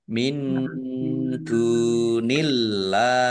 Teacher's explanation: nun sukun bertemu dengan huruf dal bacaan ikhfa, dibaca samar-samar. Dal domah wawu sukun mat tobi'i, Allahnya dibaca tipis karena harokat di depannya kasroh.